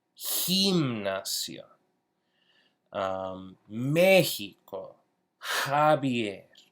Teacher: it really is very similar to an H sound except we're actually creating with friction towards the back of our mouth